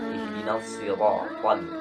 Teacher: Awas, pengucapan huruf ro ini tidak lebih dari 2 getaran.